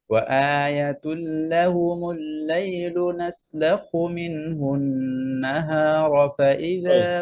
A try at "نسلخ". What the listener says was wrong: খয়ের যে আওয়াজটা না, রখাওয়া, এই খয়ের আওয়াজটা আসতেছে না, যেমন নাসলাখু, হু এরকম হায়ের মতো চলে আসে, লেটার চেঞ্জ হয়ে যাচ্ছে। আবার খেয়াল করেন, সুবহান ওয়া আয়াতুল লাহুমুল লাইলু নাসলাখু, লাখু, লাখ, লাখি, বুঝছেন?